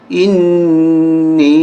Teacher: نون پہ غنہ کریں گے اور نون کو یا کے ساتھ ملاتے ہوئے کھینچیں گے. یا پہ چھوٹی مد ہے.